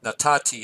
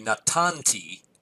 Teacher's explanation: And natan is actually a notoriously fickle and strange verb, but here the final noon drops out and gets sort of absorbed by the ending here